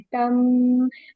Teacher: यहाँ मीम मुशद्दद है तो यहाँ पर हम गुन्ना करें